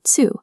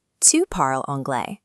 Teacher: In Quebecois French, the pronoun tu undergoes affrication, adding a distinct friction sound that results in tsu.